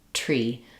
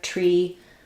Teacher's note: So when we say tree, our tongue goes behind our teeth and the air bursts out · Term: t sound